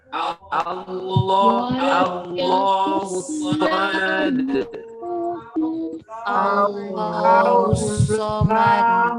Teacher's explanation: Bukan o ya, bukan Allahu tapi a. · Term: fathah